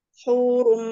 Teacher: Hurum berarti masuk gunanya di hidung semua. Ketika kita pencet hidungnya hurum itu suaranya terputus karena gunanya sempurna di hidung. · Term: idgham biguna